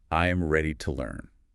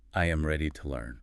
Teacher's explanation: You dropped the pitch at the end. That signals confidence. If you raise the pitch, it sounds like a question.